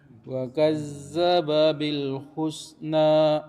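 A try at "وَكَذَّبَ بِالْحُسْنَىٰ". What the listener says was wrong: Nih za-nya masih Pak. Wa kadza wa kadza. Ah, ini jangan ada ininya hilang tidak. Wa kadza.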